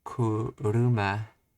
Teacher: kuruma rises in Pitch it's not really flat but it just stays the same after the initial change